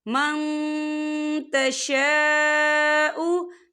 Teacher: नून साकिन की आवाज़ को नाक में छुपाएंगे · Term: इक्फा